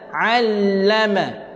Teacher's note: Jaga ain, jangan tukarkan dia dengan hamzah.